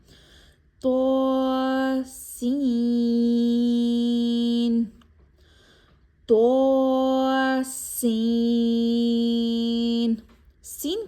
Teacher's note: ایسے حروف جن کو پڑھتے ہوئے ایک سیٹی جیسی ساؤنڈ آتی ہے، یعنی ایک بزنگ ساؤنڈ آتی ہے، ان کو حروف صفیریہ کہا جاتا ہے۔ تو دھیان رہے کہ سین کو پڑھتے ہوئے سیٹی جیسی آواز واضح ہوگی